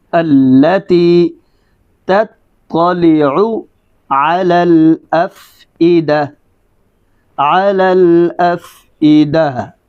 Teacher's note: جب وقف کرنا ہے تو آخر کے اوپر ہا کی آواز کا برقرار رہنا ضروری ہے